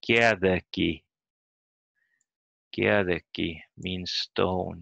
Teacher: It has a small vowel sound between the de and the g